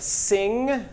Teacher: Velar nasal, of course. This is the sound at the end of sing